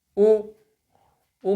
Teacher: ऊ में कहाँ गई आपकी जीभ? पीछे गई, ऊ पीछे ही है